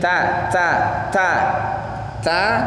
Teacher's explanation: sifat hurufnya Hames jadi dia harus keluar nafas